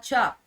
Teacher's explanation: तालव्य महाप्राण अघोष व्यंजन